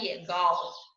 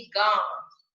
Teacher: चा पर नाक और मुंह से जोर देते हुए उच्चारण करेंगे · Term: चंद्र बिंदु